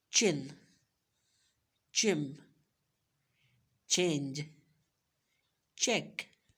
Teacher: Again we have च sound. त और श साउंड जो है इसको जब हम मिक्स करें तो वी विल गेट च साउंड